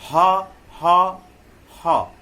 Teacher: ये कंठ से निकलता है, स्वर यंत्र से निकलता है।